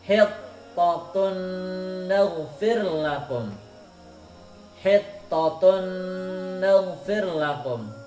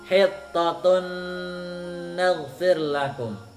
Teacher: Tanwin ketemu nun. Jadi bacanya harus dengung.